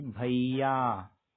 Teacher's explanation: यानी कि य को आखिरी वर्ण को हमें खींचना है।